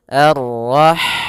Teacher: Ha dia memiliki sifat hamas, yaitu maka harus mengalirnya nafas